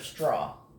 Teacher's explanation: When you say str, you hear all 3, as in straw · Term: consonant clusters